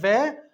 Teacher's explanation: हमारे जो ऊपर के दांत हैं वो नीचे वाले होठ के ऊपर आ जाते हैं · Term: दंत ओष्ठ्य